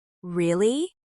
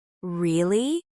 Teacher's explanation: But if you raise your pitch at the end, Really? it sounds curious and alive.